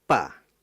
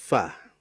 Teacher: Gigi seri atas ya. Sehingga dengan nempel gigi dengan bibir akan mengalirkan udara yang disebut dengan hames.